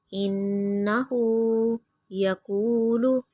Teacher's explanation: نون مشدد پہ غنہ کریں گے